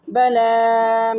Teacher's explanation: بلا لام کو میں نے کھڑی زبر کو ایک الف یعنی 2 حرکات کے برابر کھینچ کر پڑھا